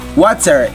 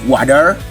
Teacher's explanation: T sound flaps in American, like water, it's going to be water.